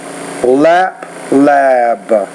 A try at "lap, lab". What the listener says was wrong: Notice you're trying to say them in the same duration, but lap, lab is something that you can look at. So in lesson 19, just try to focus on making the vowel sound longer when it occurs before a B and also other voice consonants.